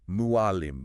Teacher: But practically, it's a tightening deep in the throat. Try to make an ah sound, but pull it way, way back and constrict those swallowing muscles. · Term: ain sound